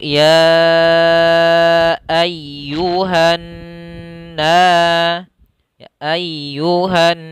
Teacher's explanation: Gunnah yaitu menahan suara dengungannya. Maka ketika membacanya adalah kita tahan dulu n-nya. Langkahnya adalah menahan n, kemudian digunnahkan.